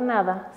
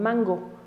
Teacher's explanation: cambia hacia el punto de articulación de esta consonante que es velar en la zona trasera del paladar y se convierte en ga como en mango tanto la n